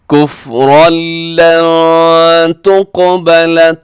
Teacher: لن تقبل میں نون ساکن کے بعد تا ہے تو یہاں ہم اخفا کریں گے۔ · قاف کلکلا بھی ہے موٹا بھی ہے